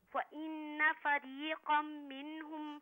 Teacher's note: فریقم پہ غنہ کیجئے، کم پہ